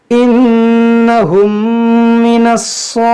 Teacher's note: देखिए नून मुसद्दफ है, इसमें गुन्ना करेंगे, यहाँ मीम साकिन के बाद मीम है, यहाँ पर भी गुन्ना करेंगे। यहाँ स्वाद हुरूफ मुश्तालिया है, इसको मोटा पढ़ेंगे